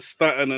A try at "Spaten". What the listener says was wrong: You have to learn how to pronounce it, though. It's not called spat. Spaten.